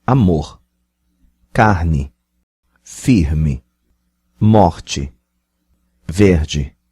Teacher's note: In Carioca, the Rio variety, if the single R appears in word finally or syllable final, it's pronounced ha, but it could be pronounced in a stronger way, approaching ha or he.